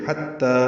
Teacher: حتی تا باریک ہے، دو حرکات لمبا